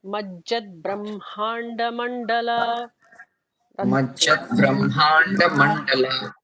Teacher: emphasis will not be on capital the or capital bha for the ones that are before. The emphasis is on hma, not the bha.